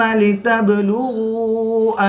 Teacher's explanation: با بھی حروف قلقلہ میں سے ہے، یہ ساکن ہے تو اس پر قلقلہ صغریٰ کریں گے